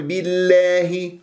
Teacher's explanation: وبما ان اسم الجلال الله سبق بكسر فتكون اللام مرققه